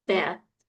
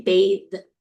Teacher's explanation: You can and if you put your hand on your vocal cords, you can feel a difference. So if you say bath and then you say bathe, you feel your vocal cords vibrating for that second one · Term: th sounds